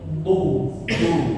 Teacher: Jangan ada suara desi seperti z tapi du du bersih ya. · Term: huruf dak